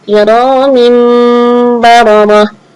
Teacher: tanwinnya cukup berubah menjadi Bunyi huruf mim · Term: iqlab